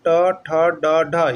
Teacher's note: ट का उच्चारण स्थान किससे होगा, मूर्धा से होगा। और ट वर्ग में क्या आता है, ट, ठ, ड, ढ, ये सभी का मूर्धा होगा, ऐसा नहीं कि सिर्फ ट का ही होगा, ठ का भी उच्चारण स्थान मूर्धा ही होगा, ड का भी उच्चारण स्थान मूर्धा ही होगा और ढ का भी उच्चारण स्थान मूर्धा ही होगा।